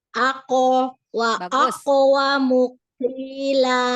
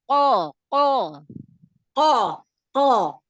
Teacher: Masih ada hamas berarti masih tercampur ke huruf kaf. Ke belakang lagi. Ke belakang lagi lidahnya. Pangkal lidahnya. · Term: huruf qaf